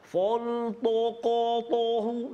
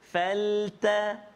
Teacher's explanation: Huruf yang kita kena tebalkan bila kita menyebut kalimah faltaqatahu, iaitulah huruf qaf. Pertama huruf qaf dan juga yang kedua huruf ta.